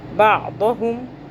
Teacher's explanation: आइन को हलक से पढ़ेंगे, दौद को मोटा करेंगे। बादहुम, हा को ये जो है हलक के सबसे निचले हिस्से से अदा होगा।